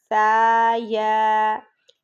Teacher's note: سا پھر ہم نرم پڑھیں گے، نرم لیٹر ہے، سافٹ لیٹر، یعنی زبان کی نوک اوپر والے دو دانتوں کے سرے کو جب لگے گی تو سا ادا ہوگا، سیٹی کی آواز نہیں آنی چاہیے